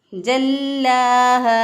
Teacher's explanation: जीम को अदा करने का तरीका ये है कि वस्ते ज़ुबान जब बिलमुक़ाबल ऊपर के तालु से लगे तो जीम अदा होता है। जल्लाहा, लाम के ऊपर शद है, मजबूती और क़ुव्वत से पढ़ेंगे। लाम खड़े ज़बर ला, एक अलिफ के बराबर लंबा भी करेंगे।